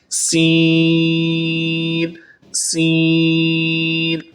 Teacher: سین کی آواز سیٹی جیسی ہوتی ہے